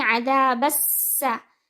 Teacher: Seen should have a whistling sound in it, and it will be read for 1 count. It's followed by ain, so ain will be sharp and clear from its makhraj with 2 counts.